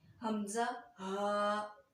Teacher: जब मैं इनको अदा कर रही हूँ तो मेरी आवाज़ थोड़ी सी भारी हो रही है। तो यकीनी बात है, जब हम हलक के नीचे वाले हिस्से से इन हरूफ को सही तरह से अदा करेंगे, अरबी लघु लहजा में अदा करेंगे, तो इनकी आवाज़ भारी हो जाएगी। · हमज़ा और हा जो हैं वो हलक के नीचे वाले हिस्से से अदा हो रहे हैं